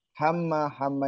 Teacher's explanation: mim tasjid sama Nun tasjid itu bacaan gunah di dengungkan ya mendengung